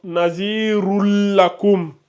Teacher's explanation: on fusionne le tanwin avec le lam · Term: idgham